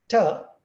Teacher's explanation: ter is an alveolar sound and so is d that's also an alveolar sound